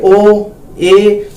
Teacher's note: अर्ध संवर्त के अंदर मुंह बहुत थोड़ा सा खुलेगा